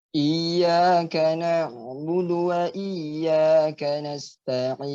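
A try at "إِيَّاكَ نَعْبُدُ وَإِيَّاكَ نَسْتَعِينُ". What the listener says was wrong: jadi huruf ain itu kan huruf istifal ya. Jadi antum tidak perlu menyempitkan daripada makhrajnya, dibuka saja. A a iyyaka na'budu na'budu na'budu. A na'budu iyyaka na'budu seperti itu.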